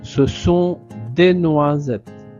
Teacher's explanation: le S est entre le I et le E, donc on prononce Z